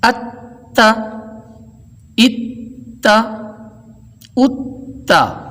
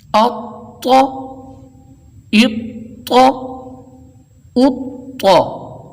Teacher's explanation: تا باریکی سے ادا ہوتا ہے جبکہ طا حرف مستعلیہ ہونے کے سبب موٹائی سے ادا ہوتا ہے. پھر یہ کہ مشدد ہوتے وقت صفت قلقلہ کا اظہار نہیں ہوتا.